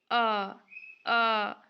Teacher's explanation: अ स्वर के उच्चारण में होंठ उदासीन रहते हैं, ना ही वे वृत रहते हैं ना ही वे अवृत रहते हैं। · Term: उदासीन स्वर